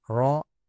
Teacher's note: A ra di sini tebal kerana berbaris fathah.